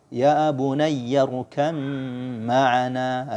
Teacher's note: ba sama ma sama-sama 2 bibir, syafatain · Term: idgham mutajanisain